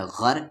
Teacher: اس را کو ہیوی پڑھیں گے کیونکہ را کی آواز اوپر جا رہی ہے